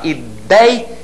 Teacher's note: Ela apresenta o ditongo ei, com essa pronúncia, aberto, e na sílaba tônica